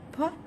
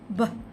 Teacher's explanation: the voiceless bilabial stop, p, and the voiced bilabial stop, b